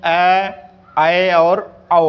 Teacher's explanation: अर्धविवृत में क्या होता है कि यह आधा मुख खुलता है। इसमें आधा मुख खुलता है, और इसमें कौन कौन से वर्ण आते हैं?